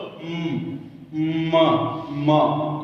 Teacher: नासिका की सहायता से उच्चरित होने के कारण इन वर्णों को अनुनासिक कहा जाता है। अर्थात इन सभी का उच्चारण स्थान कंठ है, लेकिन इसका कंठ के साथ साथ नासिका भी है।